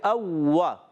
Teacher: واو پر تشدید ہے، ذرا رک کر ادا کریں گے